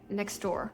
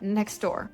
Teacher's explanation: When they are put together, we drop that T in the middle